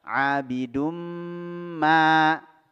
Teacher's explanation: Memasukkan tanwin ke dalam huruf mim disertai dengan dengung. Dua harokat. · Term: idgham bi gunnah